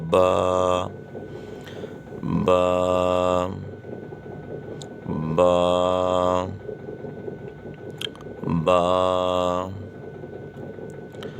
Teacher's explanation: دونوں ہونٹوں کی اندرونی تری کے ملنے سے یہ حرف پڑھا جاتا ہے. دونوں ہونٹ ہیں نا، تو دونوں ہونٹ کا جو حصہ تر رہتا ہے وہ حصے دونوں آپس میں ملیں تو یہ حرف پڑھا جائے گا.